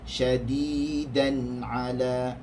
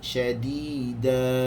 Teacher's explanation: Tetapi tanwin hanya dibaca nun itu, bunyi nun itu dapat didengari apabila diwasalkan, yakni disambungkan sahaja. Dia tidak akan dibunyikan ketika ia waqaf.